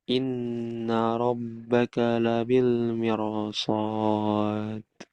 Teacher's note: Huruf ro dibaca tebal baik ketika wasal maupun waqaf.